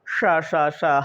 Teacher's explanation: इनके उच्चारण में जो ध्वनि है वो रगड़ खा कर के निकलती है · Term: उष्म व्यंजन